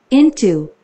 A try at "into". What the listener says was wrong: 오케이, 그래서 I는 I는 I 됐습니까? E 됐죠. E. N은 N. T는 오케이, O는 O. 오케이, O는 힘이 빠졌어.